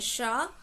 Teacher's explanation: व्यंजन श से शलजम में हम थोड़ी सी अपनी जीभ को मोड़ते हैं